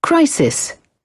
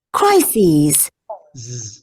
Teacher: Tem um Zzinho, né, no final. O Z. A segunda tem um som de Z no final.